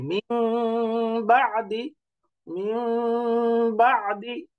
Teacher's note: এই যে মিন বাদি, মিন বাদি, এই যে আমি নাকের মধ্যে আওয়াজ ধরে রাখলাম বা একাধিক পরিমাণ আওয়াজ ধরে রেখে পড়ছি, এটার নামই হচ্ছে গুণনা